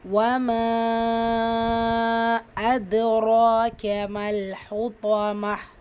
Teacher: மத்தை தொடர்ந்து அடுத்த வார்த்தையுடைய தொடக்கத்தில் ஹம்சா வருது. மத்துல் முன்ஃபசில் 4 அல்லது 5 ஹரக்கத் நீட்டலாம்